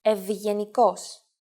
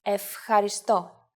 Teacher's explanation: the first makes an ev sound and the second makes an f sound